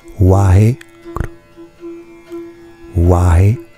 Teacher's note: En fait, guru, ça se prononce gru.